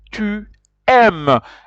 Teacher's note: And you realize that you do not pronounce es. You pronounce just aim.